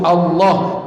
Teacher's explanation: Allah, lam tu bila lafzul jalalah dia tebal, kena sebut Allah, tak boleh sebut Allah.